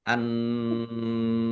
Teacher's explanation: Alif lam samsiah karena tidak dibaca langsung masuk ke huruf berikutnya yaitu nun ditandai nunnya ada tasdidnya. Nun tasdid dibaca gunnah atau mendengung ditahan ya biar tampak mendengungnya. Kemudian nun fathah alif mat tabi'i tetapi karena bertemu dengan huruf terakhir yang dibaca sukun maka menjadi mat arid lis sukun.